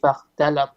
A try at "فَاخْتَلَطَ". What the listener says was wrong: فاختلط. Make your kha heavy.